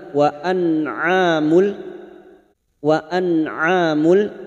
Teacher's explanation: nun sukun bertemu Ain Idhar halq nun sukun dibaca jelas tanpa mendengung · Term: idhar halki